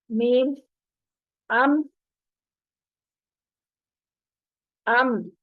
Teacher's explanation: मीम अदा करते हुए होंठ आपस में मिल गए।